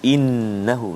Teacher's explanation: Kita nak baca ni hati-hati kita jumpa kalimah innahu di atas nun ada sabdu, nun musyaddadah di atas nun. Jadi kena dengung dua harakat wajib al-gunnah.